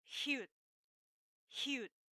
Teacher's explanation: it is a glottal sound, which means it comes from a mouth wide open but a throat closed, and with force into that sound. So, hyut, hyut.